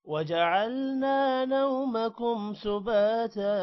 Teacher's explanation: با کے بعد الف لمبا کریں گے اور تا بھی لمبا ہوگا